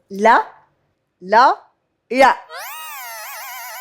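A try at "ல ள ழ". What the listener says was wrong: லா லா லா, இந்த 3 டிஃபரெண்ட் நல்லா இருந்துச்சு. ஆனால் 3 சொல்ல உச்சரிப்பு ஒரே மாதிரி இருந்துச்சு.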